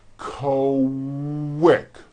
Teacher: the word quick is pronounced with a K and a strong W sound. Quick, like that. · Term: Q sounds, Q sound